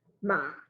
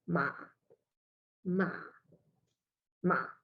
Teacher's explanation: And then you got the sixth tone, which is ma. So it's quite flat, it's low, it's flat